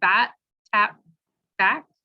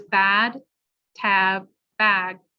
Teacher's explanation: bat, tap, back are said very quickly, whereas bad, tab, bag are longer vowels, longer sounds, because you're fully saying the voice sound.